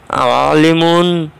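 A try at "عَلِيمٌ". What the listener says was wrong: আলিমুন লামের সঙ্গে ইয়াজা আছে টানতে হবে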